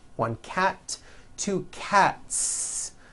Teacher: word cat ends with an unvoiced teeth one cat two cats again the s ending is unvoiced